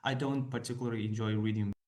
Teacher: particular just kind of disappears towards the end